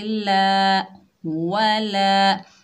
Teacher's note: लाम के ऊपर खड़ा ज़बर, एक अलिफ की मिकदार खींच कर पढ़ेंगे।